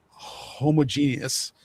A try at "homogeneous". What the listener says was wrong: You're putting the emphasis on the wrong syllable.